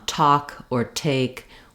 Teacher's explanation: we completely stop the air and then we release it in an explosion